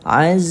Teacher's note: baca panjang Aziz tu 2 harkat